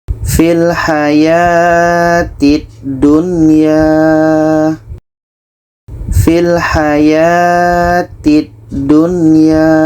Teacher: menyebutnya dengan izhar mutlak yaitunya apabila nun sukun bertemu huruf Waw atau bertemu huruf ya dalam satu kalimat dan dibaca tidak dengung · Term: izhar wajib